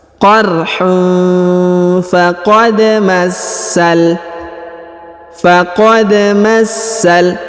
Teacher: huruf dal berharokat sukun, maka dikolkolahkan atau dipantulkan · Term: qalqalah